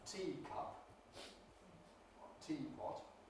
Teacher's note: If there were a morpheme break between the E and the following consonant, as in a teacup or teapot, then you would not get the clipping, Pre-Fortis clipping effect. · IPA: /ˈtiː kʌp/